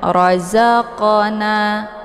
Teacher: zaqana di sini ada huruf qof yang terdapat di pertengahan kalimat ini dinamakan dengan Qalqalah Suro jadinya dibaca secara memantul · Jadi qafnya dibaca secara memantul.